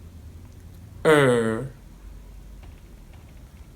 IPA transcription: ɜ: